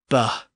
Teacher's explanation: within the Germanic languages they just lost their aspiration or breathiness there was an aspirated B sound